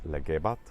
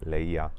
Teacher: that G sound disappeared into becoming eliminated completely, and the B sound also disappeared